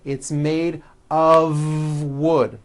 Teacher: It's not wood with an unvoiced F. It's all voiced and it's all connected.